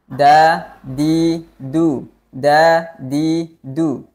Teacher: ada aliran suara atau suaranya itu tertahan dengan sifat syiddah kemudian pangkal lidah ketika kita mengucapkan huruf Dal itu tidak terangkat atau yang dinamakan dengan sifat istifal dan Aula Tengah lidahnya juga